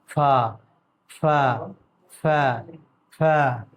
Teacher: دونوں ہونٹ کا جو تری والا حصہ ہے نا، تو اس سے فا کی ادائیگی ہوگی، تب بالکل فا، اور فا میں ہلکی ہوا جو ہے منہ سے باہر نکلے گی، فا میں ہلکی ہوا منہ سے باہر نکلے گی، تب ہمارا فا ادا ہو جائے گا